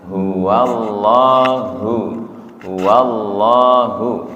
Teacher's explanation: Bedakan antara ha dan ha. Ha bawah, ha tenggorokan tengah.